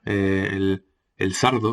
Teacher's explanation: Luego tenemos la neutralización de R y L implosivas, que es un rasgo mozárabe, como el golpe, el sardo, en lugar del saldo, el sardo. O sea, se pronuncia la R como L, la L como R, ¿no? En posición implosiva.